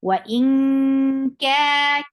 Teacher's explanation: You are hiding the sound of noon, and you're going towards the makhraj of kaf, and you're keeping sound in your nose. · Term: ikhfa